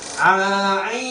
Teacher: Ain itu datar saja. Tapi dia mengalir ke dalam. Dia lebih dalam daripada huruf ha.